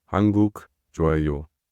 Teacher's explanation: When you answer a question, you go with your voice down. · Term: intonation